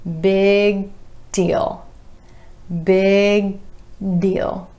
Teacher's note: Instead of releasing that G, big deal, you're holding the G with the back of the tongue up to the soft palate and then going straight into the D for deal.